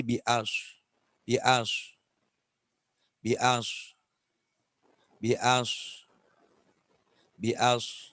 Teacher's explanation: ada suara siulnya meskipun sedikit, ada sofirnya